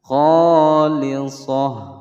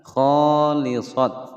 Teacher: Lisah ada tak marbutah menyandang harokat fathatain, ketika diwakafkan maka bunyinya menjadi ha.